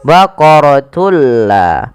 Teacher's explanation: Yang dimaksudkan di sini adalah memasukkan suara tanwin pada lafal baqaratun ke huruf la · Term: Idgham bila gunnah